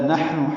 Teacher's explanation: نحن ہا ساکن ہے، اس پہ ہمس ہے، سانس جاری رہے گی اس کے پڑھتے ہوئے. نون کو معروف طریقے سے جلدی پڑھنا ہے.